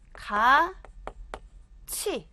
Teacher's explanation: 티읕음이 모음 이를 만나서 치읒음으로 바뀌었네요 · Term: 구개음화